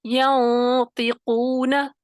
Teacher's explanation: چوتھے درجے میں آپ نے اس کو موٹا کرنا ہے. ینطقون، پیچھے سے زبان کی جڑ کو اٹھائیں گے لیکن چوتھے درجے میں تخفیم کرنی ہے، پہلے درجے میں نہیں